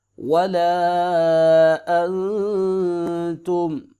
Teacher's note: حمزہ زبر نون نون ساکن ہے اخفا ہوگا